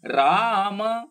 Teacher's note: ರಾ ದೀರ್ಘ ಮ ರಸ್ವ